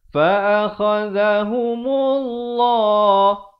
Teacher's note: perkataan Allah datang sebelumnya baris dhammah, dibaca tebal.